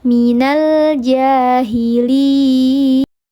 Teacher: ada mad bertemu dengan huruf hidup yang mati karena diwaqafkan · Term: mad arid lukun